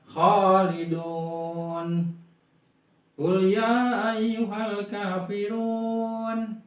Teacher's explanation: Itu kan kalau waw mati setelah doma kan mad tobi'i ya, 2 harokat. Tapi karena posisinya di akhir ayat berubah jadi 6 harokat ya, dibacanya panjangnya. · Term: mad adil disukun